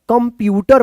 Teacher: अब देखिए यहाँ पे क के ऊपर ए बिंदी है तो कन, कन नहीं होगा, कम होगा, आधा म का उच्चारण